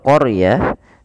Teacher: Kemudian pelafal qarah di situ huruf rnya ditebalkan. Karena huruf ro yang didahului dengan huruf fathah maka dia kita namakan dengan ro tafkhim. Harus tebal.